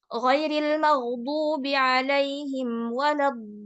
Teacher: Dan lamnya ini tasydid. Kalau tasydid berarti ada sukunnya, ada lam sukun dan lam kasroh. Sehingga bacanya jadi 6 harokat. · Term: mad lazim kalimi musaqqal